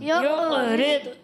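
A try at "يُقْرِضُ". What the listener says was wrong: کلکلا نہیں. یقرض، یقرض. قاف میں کلکلا کریں گے، ضاد میں کلکلا نہیں کریں گے.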